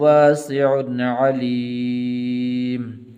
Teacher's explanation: واسع غنہ نہیں کریں گے اس لیے کہ آگے عین حروف حلقی میں سے ہے